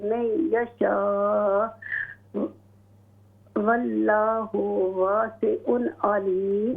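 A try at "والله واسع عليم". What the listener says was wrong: वल्लाहु, लाम को मोटा कीजिए, वल्लाहु वासिउन अलीम।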